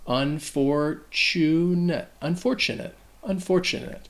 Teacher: So this word can be troublesome because that TU actually sounds like a chew